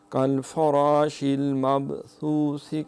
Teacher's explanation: مبثوث یہاں دونوں تھا ہیں، اس میں سیٹی کی آواز نہ آئے